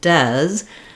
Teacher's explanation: because we stress on this first syllable Dez the letter e has the clear vowel e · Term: first syllable stress